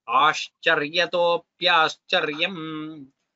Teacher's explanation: Shakara should be well heard. It should not become as sa, which a lot of people do.